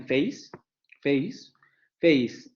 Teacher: El primer ejemplo, tenemos la vocal semicerrada anterior no labializada, más la vocal media cerrada, como en face, face, face, y ahí es clarísimo el diptongo decreciente. La tonicidad cae en la primer vocal